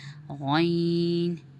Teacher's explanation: غین کا مخرج حلق اقصی الحلق ہے، تو اس میں بھی زبان اوپر کی طرف اٹھے گی اور موٹی آواز نکلے گی غین کی